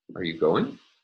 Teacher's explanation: And since there is one syllable following the starred tone, the high tone is able to be realized on that final syllable. And we can hear that pitch rise on the final syllable.